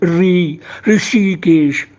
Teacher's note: तो कोई लोग री नहीं बोल पाते, मूर्धन्य री होना चाहिए